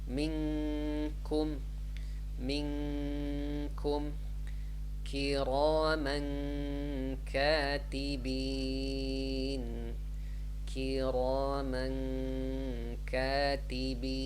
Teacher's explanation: you prepare to say kaf, like in the back, on the back of your throat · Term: ikhfa